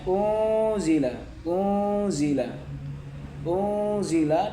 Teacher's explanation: Nun sukun bertemu zain adalah bacaan ikhfa hakiki. Cara bacanya dengan cara samar sambil berdengung sebanyak tiga ketukan. atau tiga harakat atau satu setengah alif.